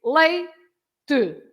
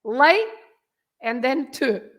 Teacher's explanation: you have two syllables right and you have to stress the first part you have to say like and then two right so you